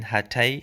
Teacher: it's a retroflex t sound